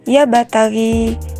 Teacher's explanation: Di sana terdapat huruf ba yang berharakat sukun, namun ketika kita membacanya, pantulannya tidak kita beratkan karena ia berada di tengah ayat dan termasuk kepada hukum bacaan qalqalah sugra.